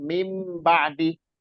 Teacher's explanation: ba'di tulisannya min min ketemu ba ya Jadi dibacanya mim jadi suara Nun itu nun sukun disuarakan menjadi mim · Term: iqlab